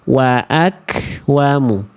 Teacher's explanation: Kalau kaf ketika sukun dia akan keluar percikan nafas.